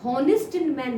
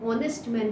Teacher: लेकिन नहीं, हम हॉनेस्ट मैन नहीं बोलते, हम ऑनेस्ट मैन बोलते हैं। यहाँ पे एच क्या है, साइलेंट है, इसलिए हम एन का इस्तेमाल करते हैं